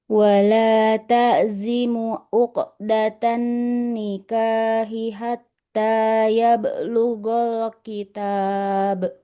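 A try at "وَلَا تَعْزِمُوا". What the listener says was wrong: Ain sukunnya kurang mengalir soalnya. Wala ta'zimu.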